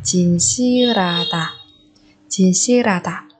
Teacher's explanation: Ở đây 실 và 하 thì chúng ta biến âm thành 실 và 라.